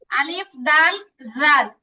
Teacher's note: জালটা হচ্ছে একেবারে নরম জিবাটা উপরে দাঁতের সাথে লাগবে হালকা বাইরে থেকে দেখা যাবে